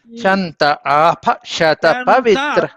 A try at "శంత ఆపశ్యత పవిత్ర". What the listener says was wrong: మనకి స్వరచమే చెప్తున్నారండి శంత అనుదాతం చెప్పాలి శంత ఆపశ్యత పవిత్ర